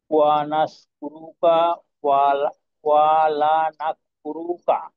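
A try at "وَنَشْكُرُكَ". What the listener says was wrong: এইখানে ওয়ানাশ কুরুকার ক্ষেত্রে সিনের উচ্চারণটাকে আরেকটু স্পষ্ট করা, অন্যথায় সিন নাস কুরুকা এমনটা বুঝে যাওয়া সম্ভব। নাশ, তালব্য বস, ওয়ানাশ কুরুকা।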